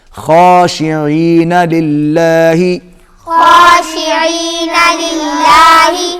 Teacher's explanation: خا موٹا پڑا جائے گا، عین حلق میں سے ادا ہوگی۔ خاشعین للہ، خاشعین للہ، یہاں پر آپ دیکھ رہے ہیں کہ اللہ کے لام سے پہلے زیر آ گئی تو یہ باریک پڑا جائے گا۔